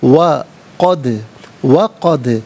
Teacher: دال ساکن ہے، حرف قلقلہ ہے تو آواز لوٹتی ہوئی محسوس ہونی چاہیے